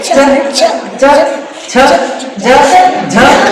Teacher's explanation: तो तालु को जीभ हमारी छूकर आती है, च च छ ज झ, तालु दांतों के थोड़ा ऊपर जाके जीवा हमारी टच करके रिटर्न आती है। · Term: तालव्य ध्वनि